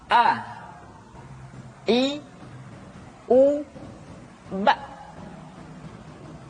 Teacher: makhraj ketika mengucapkan huruf a berada pada tenggorokan yang terjauh